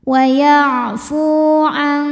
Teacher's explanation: Maka huruf fa kita panjangkan hanya 2 harokat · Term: mad tabi'i zahiri